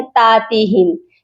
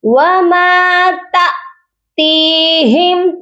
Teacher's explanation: وَمَا تَأْتِيهِمْ، یہاں پر آپ دیکھیے تا کے ساتھ حمزہ ہے، بہت سے لوگ یہاں پر مسٹیک کرتے ہیں تاتیہم، تا کو لمبا کر دیتے ہیں، تا کے ساتھ الف نہیں ہے، جب بھی الف ہوتا ہے پھر ہم اس کو لمبا کرتے ہیں، حمزہ جب آتا ہے تو ہم جھٹکا دے کر پڑھتے ہیں · تی کو کھینچیں گے کیونکہ اس کے ساتھ یا مدہ ہے